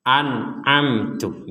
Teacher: nun mati bertemu Ain dibaca jelas mim mati bertemu ta juga dibaca sama-sama jelas an'amtu bedanya yang pertama itu Hamzah yang kedua itu Ain jadi